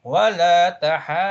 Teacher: So that means you read it high intonation, but because also the mad is followed by shadda, you hold that mad for 6 harakat obligatory.